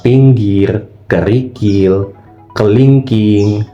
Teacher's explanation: Nah, dan juga posisi lidahnya agak maju ke depan. Dan untuk posisi bibir itu sedikit saja direntangkan tapi tetap tidak dibulatkan. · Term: vokal I tinggi bawah depan